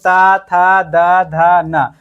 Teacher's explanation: इसका उच्चारण करते समय हमारा जो जीभ है वो दांत को स्पर्श करता है, दंत को स्पर्श करता है, इसलिए इसे दंत वर्ण बोला जाता है